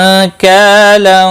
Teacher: نون ساکن کے بعد کاف آیا ہے، اخفاء حقیقی ہوگا